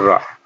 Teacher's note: यानी जीभ की जो नोक से मुख द्वार है वो जल्दी जल्दी जो है खुलता बंद होता है, तो इसलिए इसको लुंठित, मतलब हमारी जो जीभ है वो लुंठित हो जाती है, मुड़ जाती है। ऐसे जीभ ऐसे होती है तो ये बीच से थोड़ी गोल हो जाती है, गोल हो जाती है, पतली हो जाती है, लुंठित हो जाती है, लिपिट जाती है, तो इसलिए इसको जो है लुंठित व्यंजन कहा जाता है। · इसमें मुख द्वार जीभ की नोक से जल्दी जल्दी बंद व खुलता है लगभग 3 बार। यानी जीभ की जो नोक से मुख द्वार है वो जल्दी जल्दी जो है खुलता बंद होता है, तो इसलिए इसको लुंठित, मतलब हमारी जो जीभ है वो लुंठित हो जाती है, मुड़ जाती है।